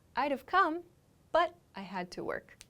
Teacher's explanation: i reduce wood to d and i make the sound for have